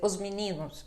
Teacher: Então, ao invés de dizerem os meninos, aí vão dizer os meninos. E aí, praticamente, você não escuta o S final.